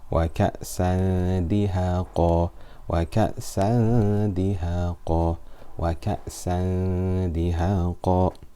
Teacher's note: It's not one of these 6 yarmaloon letters, it's not one of these 6 ilthar halqi letters, it's not ba, it's not iqlab, it's ikhfa haqiqi. Dal is light mouth, so the ikhfa, the ghunna will be light.